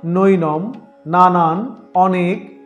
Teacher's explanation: দন্ত ন এর উচ্চারণ হয় দন্তমূলে